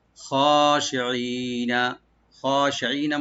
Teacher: খটাকে একটু ডিপ করে আমরা একালে টানবো, খ শি ই, শিনটাকে রাইট দেবো, আর ই আইনটাকে রাইট দিয়ে একালে টানবো, নুনে কোনো টান নাই।